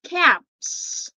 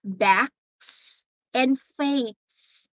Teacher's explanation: right how about caps it's letter s backs and Fates see we don't pronounce a letter s there as Z but it's s